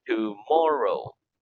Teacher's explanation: The accent in the word tomorrow is on the second syllable